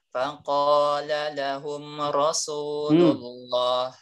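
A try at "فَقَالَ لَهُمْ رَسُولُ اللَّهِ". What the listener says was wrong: Faqala lahum rasu. Jangan rosu.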